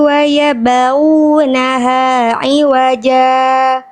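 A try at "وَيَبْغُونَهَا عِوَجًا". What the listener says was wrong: Wah, huruf banyak hati-hati jangan ke bawah ya, be. Waya be, tipiskan. Ya, kalau ba, kalau kolanya harus tipis karena ba huruf tipis, makanya bacanya bukan wayabu, wayabu. Jangan ke bawah tebal huruf ghainnya. Wayabghunaha iwaja.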